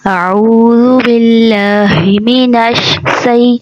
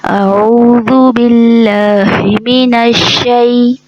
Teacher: شین میں شور ہے جو اس کی صفت ہے، اس کو واضح کر کے پڑھنا ہے